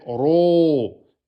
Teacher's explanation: c'est pas rou. Hein, il est emphatique. Donc c'est ro. Et deux temps. Ro. Et le reste est aminci.